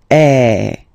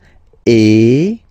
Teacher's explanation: So it's really open. I mean, the sound is really open, and normally your mouth should be opened a little bit more than with the accent aigu as well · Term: accent grave